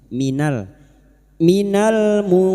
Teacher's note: nun sukun dibaca samar dan mendengung selama 3 harokat, ikfa hakiki